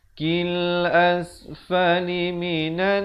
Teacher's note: dengungkan di sini 2 harakat, wajibul gunnah